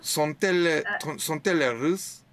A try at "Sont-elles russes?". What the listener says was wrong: Parfait.